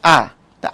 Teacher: যখন নিচে একদম জীব সবার নিচে থাকবে তখন আ। আ বললে তো জীব একদম নিচে চলে আসতেছে। এবং ঠোটের উন্মুক্ত অবস্থা এটা বলা হয় বিবৃত।